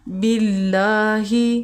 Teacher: یہاں پہ زیر ہے تو ہم باریک پڑھیں گے، اور کھڑا زبر ہے اللہ کے لام پہ، اس لیے ہم 1 سیکنڈ کے لیے لمبا کریں گے